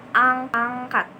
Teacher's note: Selain N ada juga ini tuh menempel ke belakang lidah ya, ke langit-langit lunak sambil bergetar. Jadi belakang lidahnya tuh menempel ke si langit-langit lunak itu. Contohnya angkat ya, sedikit berdengung juga.